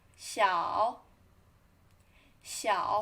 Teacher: first falling, then rising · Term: third tone